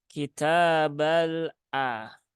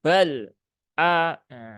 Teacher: lam Dia tidak punya sifat sidah Tetapi dia sifatnya adalah tawasud Nah maka tunaikan tawasudnya kitabal a ya bukan bal aah nanti